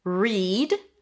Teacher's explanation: An R sound. A high E. Read and then a D.